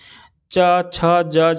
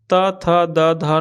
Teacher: स्पर्श व्यंजन ये कंठ, तालु, मूर्धा, दंत और ओष्ठ स्थानों को स्पर्श से बोले जाते हैं